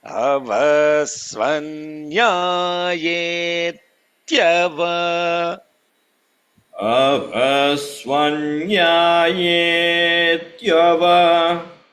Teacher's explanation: There is almost like a pause where I'm holding the the ta before I release it.